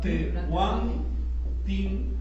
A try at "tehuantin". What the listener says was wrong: Ahí nada más hay que tener cuidado con la aspiración, no es te huantin. te guantin.